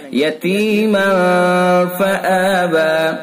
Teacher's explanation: غنہ ہوتا ہے لیکن اس کو ناک کے بانسے سے یعنی خیشوم سے نکالتے ہیں. یتیما فآوى، یتیما ناک کی نرم ہڈی سے خیشوم سے نکالیں گے. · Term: اخفاء حقیقی